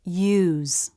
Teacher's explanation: thong tongue releases lifts in the back and the lips round in a stressed syllable the U diff thong curves up then down